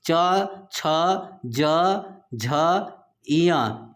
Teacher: आपका च वर्ग का उच्चारण स्थान तालु होता है। च वर्ग के जितने वर्ण होते हैं, च, छ, ज, झ, इय, ये सब आपके च, छ, ज, झ, इय सब आपके तालु से उच्चारित होते हैं।